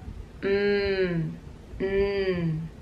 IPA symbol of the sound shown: m